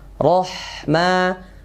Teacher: Ro tebal ya. Ha sukun tipis.